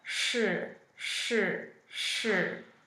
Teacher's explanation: it's retroflex and what that means is that your tongue curls back a little bit so it's like saying sure but you curl the tongue back